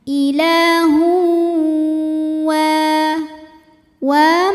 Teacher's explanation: karena ada tanwin dammah menghadapi huruf wau maka tanwinnya dileburkan atau dimasukkan ke wau disertai dengungan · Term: idgham bhunnah, idgham bi gunnah